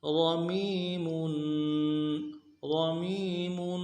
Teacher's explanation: را کو موٹا کریں گے، میم کو یا کے ساتھ ملانا ہے، یا مدہ ایک الف دال میں کھینچیں گے، اگلے میم کے اوپر تنوین ہے غنہ کریں گے، وقف کی صورت میں تنوین کو ساکن سے بدلیں گے.